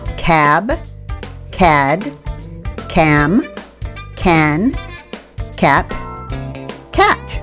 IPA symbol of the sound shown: k